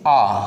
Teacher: मुंह पूरा खुल जाता है इसे विवृत कहा जाता है